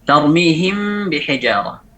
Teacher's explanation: Gunnahnya ada pada mim yang tarmihim, bukan pada ba.